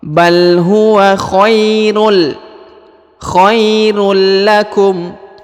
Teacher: harokat tanwin harokat un bertemu dengan huruf lam, maka huruf tanwinnya menjadi melebur ya, menghilang langsung masuk ke huruf lam